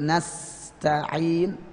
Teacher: sin ada sifat shafid, jadi ada bunyi sis itu nasta'in.